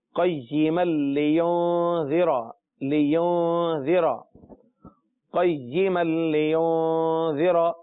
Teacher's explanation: میم کا لام میں ادغام ہو رہا ہے، لہذا اب تنوین اور نون کی آواز چلی گئی اور لام میں مل گئی